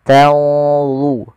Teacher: tanzurun ada nun mati ketemu dha, ikhfa-nya langsung ke dha, agak tebal